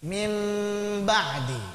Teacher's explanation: Mimnya diikhfakan, disembunyikan ke huruf ba. Karena mim dan ba sama-sama ngucapinnya itu nempel, ya sudah disembunyikannya dengan diteruskan saja. Mim ba'di. Baik, mim yang nempel disembunyikan ke ba yang nempel. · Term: iqlab, gunnah